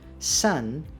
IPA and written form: sʌn (Son)